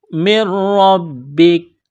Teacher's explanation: نون ساکن کے بعد را ہے، را کے اوپر تشدید ہے، یہاں اس نون کو نہیں پڑھیں گے، نون کا را میں ادغام کریں گے. را اور با کو دبائیں گے تشدید کی وجہ سے